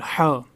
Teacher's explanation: ایک ہے چھوٹا والا ہا، وہ نکلتا ہے حلق کے نچلے والے حصے سے